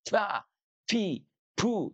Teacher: Ya, artinya tidak ada nafas yang mengalir ketika huruf ba diucapkan. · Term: jahar